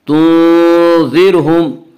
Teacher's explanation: اس کا قاعدہ یہ ہے کہ را ساکن سے پہلے زبر یا پیش ہو تو را کو پر پڑھیں گے، اور را ساکن سے پہلے زیر ہو تو را کو باریک پڑھیں گے۔ یہاں را ساکن سے پہلے زیر ہے اس لیے را کو یہاں پہ باریک پڑھیں گے۔ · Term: را باریک